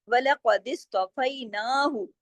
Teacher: نا کو ایک الف کے برابر کھینچنا ہے, لیکن ہاں کو نہیں کھینچنا, ہاں پیش ہو بس, ٹھیک ہے, اتنا.